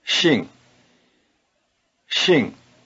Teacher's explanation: it starts with a sound that is neither quite like English s nor quite like English SH listen Shing Shing it might help Shing is halfway between the